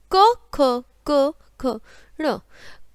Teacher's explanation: कंठ और जीभ का निचला भाग जो होता है उससे इसका उच्चारण होता है, जिसे बोलते हैं कंठ्य